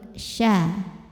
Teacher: syin ini punya sifat yang tidak dimiliki huruf lain namanya tafasi Artinya kita harus sebarin angin di dalam mulut · Tengah lidah menyentuh langit-langit